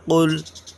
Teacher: ایک ہوتا ہے کاف، ایک ہوتا ہے قاف، تو یہ حلق سے نکلے گا